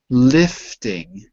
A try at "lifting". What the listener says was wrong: Yeah, I heard lie, but not I.